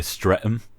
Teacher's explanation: No H sound, like no TH sound.